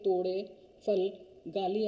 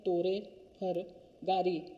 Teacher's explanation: बड़ पश्चिमी हिंदी में भला भलो और पूर्वी हिंदी में भल पश्चिमी हिंदी की ड़ ढ तथा ल ध्वनियां पूर्वी हिंदी में प्राय र में बदल जाती हैं